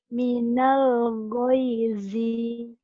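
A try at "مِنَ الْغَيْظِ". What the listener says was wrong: Pendek. Pendek, jangan dipanjangin ujungnya. Minal goyzi.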